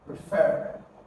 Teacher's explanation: So you're going to have to stress the second syllable. So you say re, and then you have fer.